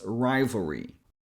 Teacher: first syllable, ry, is the strongest one. So, this is the syllable we emphasize. · So we go from the V sound, which you can make by touching the lower lip on your upper front teeth and adding a little bit of voice. And we go straight to the dark L sound. You know, the L we make by adding a bit of pressure in the back of the tongue